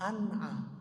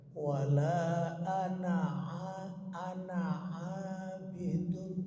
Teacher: Kalau nunnya dimatikan sekali lagi salah. Jadi nunnya dihidupkan.